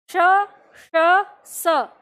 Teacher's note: सबका उच्चारण तो स ही है लेकिन बस एक ही बात है स्थान यह तालू से है यह मूर्धा से है यह दंत से है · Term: उच्चारण स्थान